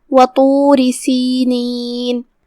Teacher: طا حروف التفخیم میں سے ہے، لہذا اسے موٹی آواز میں پڑھنا ہے